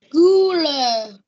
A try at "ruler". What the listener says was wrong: Biết sai cái âm nào mà cô sửa mãi không được không? Nào, phát âm lại cho cô nào. R. Ruler. Nó phát âm thế này nó thành ruler.